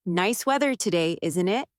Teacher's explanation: Your voice goes up slightly at the end, like you are inviting agreement.